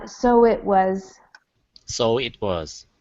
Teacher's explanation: often Americans do not say the T sound